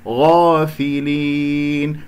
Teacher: والفاء واللام مكسورة نكسرها لا نختلس الكسرات، في لي غافلين، ولا أجعل غنة في هذه الياء، اقفلوا الأنف هكذا كما علمتكم في بداية الدرس.